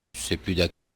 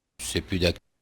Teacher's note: c'est plus d'ac- And so we're saying that that there's no S in here. There's after plus, he goes straight to a D sound